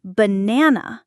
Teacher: in banana, the stress is on the second syllable, banana. If you stress the wrong syllable, the word can be difficult to understand or even change its meaning. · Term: word stress